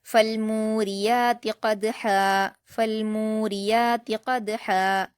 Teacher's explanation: فالموریات قدحا قاف پر حرکت ہے جلد پڑھیں گے اور پر پڑھیں گے، دال پر قلقلہ کریں گے جزم ہونے کی وجہ سے اور قاف سے ملائیں گے، ہا پر بھی وقف کرتے ہوئے ایک زبر ہٹ جائے گا اور ایک زبر کے ساتھ الف مدہ کی طرح پڑھا جائے گا۔